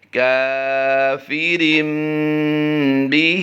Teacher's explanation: کاف الف زبر کا، فا زیر فی، کافی، را دو زیر رن، ابھی ہم نے نون کی آواز دی ہے رن، کافرن، جیسے ہی ہم با کی ادائیگی کریں گے با زیر بی، تو رن کی نون کو ہم میم سے بدل دیں گے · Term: اقلاب